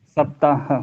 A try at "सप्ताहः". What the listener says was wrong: नहीं, हाँ के बाद विसर्ग है।